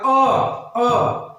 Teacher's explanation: मध्य स्वर हम जब लोग भी अ बोलेंगे तो अ बीच में से ही निकलेगा। अ आप लोग बोलेंगे वहां से अ यहां से नहीं निकलेगा।